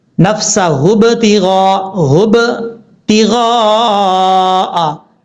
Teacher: با جو ہے وہ ہونٹوں سے ادا ہوتا ہے، اس لیے ہونٹ آپس میں ملیں گے تو با میں قلقلہ ہوگا